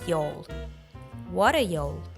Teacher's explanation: the T sound between the vowels turns into the flap T and is pronounced as du so what R becomes water and